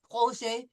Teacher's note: No pronouncing of the T, projet, soft J sound, projet.